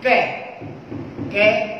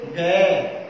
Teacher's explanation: लेकिन जैसे ही बोलेंगे ग तो हमारी स्वर तंत्रिका में कंपन उत्पन्न हो रहा है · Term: सघोष व्यंजन